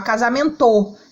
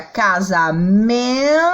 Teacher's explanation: Então, significa que o men é a sílaba forte.